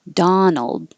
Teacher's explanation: the man's name Donald now the vowel is ah so open more